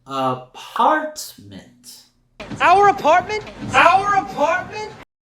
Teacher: we're going to raise our intonation on that second syllable